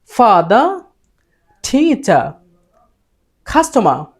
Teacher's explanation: কোন একটা শব্দ কিংবা বাক্যের শেষে যদি আর থাকে তখন ব্রিটিশ এক্সেন্টে সে আরটা উচ্চারিত হয় না।